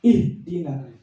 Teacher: Karena H itu punya sifat ya, namanya ar-rakhawah, mengalir ya, bukan syiddah. Ihdina. Dia mapet.